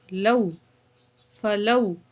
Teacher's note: واو ساکن، اس سے پہلے زبر تو حروف لین میں سے جلدی پڑھیں گے